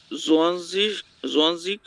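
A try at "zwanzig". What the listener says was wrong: জোয়ানসিক না, আপনার উচ্চারণগুলো একটু সোয়ানসিক জোয়ান না সোয়ানসিক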